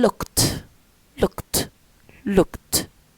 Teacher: which is a short vowel uh back and also close H we say it with the mouse close and then we